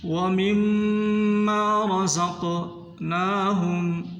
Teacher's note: میم کے اوپر شد ہے، غنہ کرنا ہے اچھی طرح